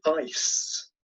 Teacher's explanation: in the word ice the vowel is truncated by that final S which is a voiceless or something we'll call its Fortis sound and this has the effect of shortening the vowel so that